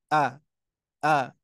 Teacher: ketika kita mengucapkan Hamzah dan H itu kerasa tuh di bawah